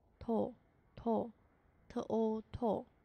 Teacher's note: 注意这个辅音是一个松音，前轻后浊